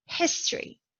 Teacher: History. The stressed syllable is the first syllable.